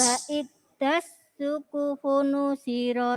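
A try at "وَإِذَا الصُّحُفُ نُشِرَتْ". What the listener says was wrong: Nah, bunyinya jadi wa idas. Nah, jadi ujung lidahnya digigit wa idzas. Wa idzas. Nah, jadi za itu memang kalau enggak digigit ujung lidahnya lari ke za atau lari ke da. Jadi nanti dilatih nggih wa idza. Ujung lidahnya digigit za.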